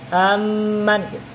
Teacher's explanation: Amnya itu ditahan 2 harkat. Amman. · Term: idgham